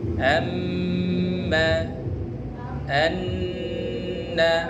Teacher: mim dan Nun bertasydid didengung didengungkan